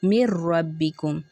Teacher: ہم نون ساکن کو ڈراپ کر دیتے ہیں نا را تشدید سے پہلے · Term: ادغام متقاربین